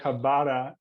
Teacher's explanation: like a spanish r it's rolled